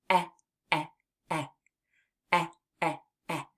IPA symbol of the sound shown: ĕ